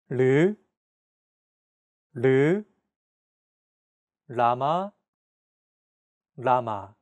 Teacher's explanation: This sound is actually somewhere between an L and an R sound. When pronouncing this sound, your tongue should strike the gum ridge behind your upper teeth in a quick, rapid motion. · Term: consonant 리을